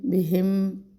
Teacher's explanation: میم ساکن پر زیادہ نہیں ٹھہرے، اظہار کرنا ہے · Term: اظہار شفوی